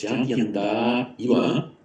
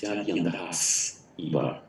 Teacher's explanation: This is another quirky Sandhi rule, that the combination long A, S before a following vowel or a following voiced consonant becomes long A. So the S disappears. In other words, Jatyantha Iva originally was Jatyanthas Iva.